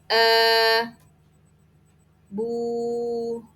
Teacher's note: Ketika u doma maka juga harus diperjelas u-nya, memonyongkannya.